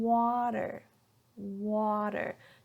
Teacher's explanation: a lot of the T sound in the middle of the word between two vowel sounds are often changed to a D sound. And there are different D sounds, but today we're going to talk a little bit how to make the sound for this flap T.